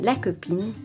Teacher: The stressed syllable in la copine is pine because the final e is silent.